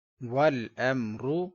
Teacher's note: میم ساکن کے بعد را ہے، لہذا اظہار شفوی ہوگا، گنہ نہیں کریں گے